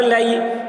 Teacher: یا ساکن سے پہلے زبر ہے، یالین ہوا، اس لیے یالین کو نرم آواز کے ساتھ جلد پڑھیں، معروف پڑھیں، مجہور آواز سے بچیں۔